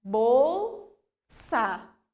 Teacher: Nós temos o encontro consonantal da letra L com a letra S. Elas ficam em sílabas separadas, mas eu pronuncio tanto L quanto S